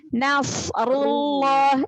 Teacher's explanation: jalalah didahului oleh harokat dhammah, maka dibaca tafkhim, dibaca tebal. Langsung masuk ke lam tasydidnya, jangan seperti ada waw.